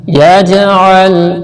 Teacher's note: یہاں پر قلقلہ کرنا ہے، یعنی کہ آواز کو جنبش دینی ہے، حرکت دے کے پڑھنا ہے، گلے میں ہلا کر پڑھنا ہے۔